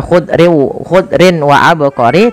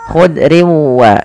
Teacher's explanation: sambil ditahan dengan guna sepanjang dua harakat · Memasukkan tanwin kepada huruf waw, sehingga bukan lagi dibaca khudrin wa abqari, tapi khudriu sambil ditahan dengan gunnah sepanjang 2 harokat. Maka khudriu nah, baru dilepas. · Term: idgam bhunah